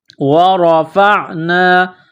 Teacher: را کے اوپر زبر ہے، را کو موٹا کرنا ہے، فا کو عین کے ساتھ ملانا ہے۔